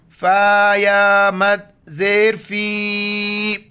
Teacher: فی مد ہے چار الف کے اندر کھینچنا ہے